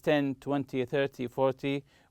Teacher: numbers such as 10 20 30 40 we usually stress the first syllable